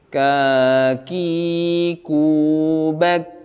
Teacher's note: huruf kaf ketika dia fathah, kasrah atau dhammah berharakat, dia tidak berlebihan nafasnya. Kecuali pada saat dia sukun, baru dia suara nafasnya memang terasa lebih.